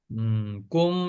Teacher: কুম এখানে গুন্না হবে কুম, এটা ইকফা গুন্না, এটা কুম হলো ইকফা গুন্না।